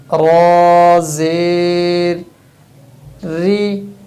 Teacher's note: را کے نیچے زیر ہے تو را کی آواز باریک نکلے گی